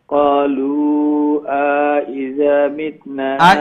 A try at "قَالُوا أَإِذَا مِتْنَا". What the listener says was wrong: إذا আলাম বইতো নাই, হামজা জবর আ, এরপরে যে আলিফ দেখরা এটা হামজা জের ই, ইদার হামজা জের ই। তো ক্বালু আইযা ওমলা খান।